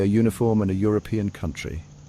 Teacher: words like uniform and European might start with a vowel but they sound like they begin with consonant Y sound